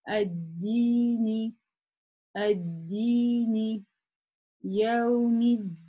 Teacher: если мы не останавливаемся, мы тянем это всего лишь два хараката